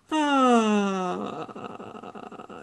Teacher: whole system and if you can relax the whole system to go down to your lowest possible pitch which is basically what fry is